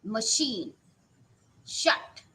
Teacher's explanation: your vocal cords are not going to vibrate when you are going to uh produce these unvoiced consonants